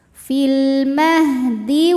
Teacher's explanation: alif lam menghadapi huruf qamariah yaitu mim maka lam dibaca dengan jelas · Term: alif lam qamariah